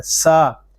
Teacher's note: سین زبر سا، سین حروف صفیریہ میں سے ہے، اس میں سیٹی کی آواز آئے گی.